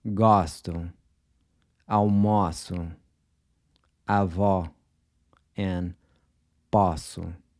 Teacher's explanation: Then the open O is pronounced aw, like the aw in awesome. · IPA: /ɔ/